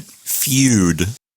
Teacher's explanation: when we say the word feud in English our tongue Rises and goes up kind of to the roof of the mouth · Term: palatalization